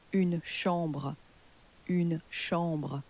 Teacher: So you'll notice there that the word for room, the word for chamber, the ch in French has changed to a sh sound, because ch in French is pronounced like an sh in English